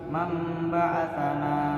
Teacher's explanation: Kemudian selanjutnya ada iklab, di mana bacaan nun sukun bertemu ba, bacanya mamba'atsana, nun sukun bertemu ba maka dibaca mim, nun sukun dan babnya disambung seperti membaca huruf mim, mamba'atsana.